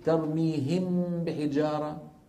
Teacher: يبقى من النون الغنه ولما ناتي الى الميم نقول ترميهم بحجاره ونطبق الشفتين ونظهر الميم فهذا ليس اخفاء · نطبق الشفتين ونظهر الميم، فهذا ليس إخفاء.